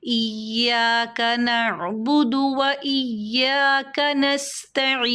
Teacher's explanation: عین یا زیر ای کو مد عارض وقفی کے تحت 4 حرکات تک کھینچ لیں گے